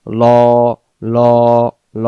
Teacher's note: আল্লাহ শব্দের ডান দিকে ওয়াইয়ের উপরে জবর থাকার কারণে আল্লাহ শব্দের লামটাকে লাম জবর লা না পড়ে লাম জবর ল পরে পড়তে হচ্ছে